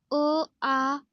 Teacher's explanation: कंठ्य स्थानातून उच्चारले जाणारे स्वर